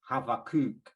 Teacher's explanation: with a v instead of a b, Habakkuk, and the emphasis on the last syllable